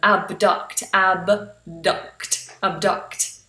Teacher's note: we have B and D this doesn't happen very often but we need to make sure we sound both of them